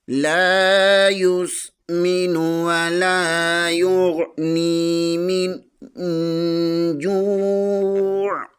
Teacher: جیم پیش کے آگے واو مدہ ہے، اسے بھی ایک الف کے برابر کھینچ کر پڑھیں گے۔ عین کے نیچے دو زیر ہے، وقف کی صورت میں عین کو ساکن کر دیں گے · نون ساکن کے آگے جیم حروف اخفا میں سے آ رہا ہے، یہاں بھی اخفا ہوگا